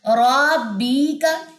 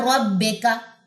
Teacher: بے کا نہیں اس کو پڑھنا، بی کا پڑھنا، یعنی کہ آپ نے زیر کو ای سمجھنا ہے انگلش کا